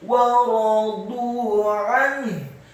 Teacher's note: wawunya dibaca fathah satu harokat. Kemudian ra-nya dibaca tafkhim fathah satu harokat, dha-nya dibaca dhammah tafkhim dua harokat karena setelahnya ada waw sukun.